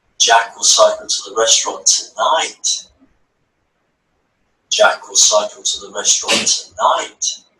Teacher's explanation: all the words in the sentence are read very quickly, apart from the key word tonight